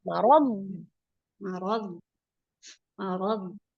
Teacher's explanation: jangan dipantulkan huruf bod itu tidak mantul. Dia ditebalkan.